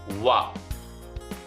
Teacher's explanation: ಈ ದಂತೋಷ್ಟ್ಯದಲ್ಲಿ ಅವರ್ಗೀಯ ವ್ಯಂಜನಗಳಲ್ಲಿ ಉಳಿದಿರ್ತಕ್ಕಂತಹ ಒಂದು ಅಕ್ಷರ ವ. ದಂತ ಮತ್ತು ತುಟಿ ಅಂದ್ರೆ ಹಲ್ಲು ಮತ್ತು ತುಟಿಯ ಸಹಾಯದಿಂದ ಇದು ಅಕ್ಷರ ಹುಟ್ಟುತ್ತೆ. ದಂತ ನೋಡಿ, ವ ನೋಡಿ, ದಂತ ಮತ್ತೆ ತುಟಿ ಎರಡೂ ಕೂಡ ಇಲ್ಲಿ ಸ್ಪರ್ಶ ಆಗ್ತಾ ಇದೆ, ವ.